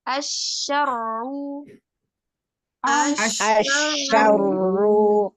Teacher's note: Shinnya tasydid, kemudian ro-nya tasydid. Nah, pada huruf shin sifatnya rokhawah, mengalir. Sedangkan si ro hanya tawasud atau bainiyah, separuh.